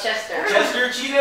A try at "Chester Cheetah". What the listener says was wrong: You said like Crudo Cheetah or something like that.